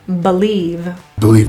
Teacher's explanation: The word believe, that B-E, is reduced to B.